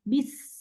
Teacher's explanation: सीन की सौफीर, सीन, इसमें sharp S की साउंड आएगी, बिस, ठीक है।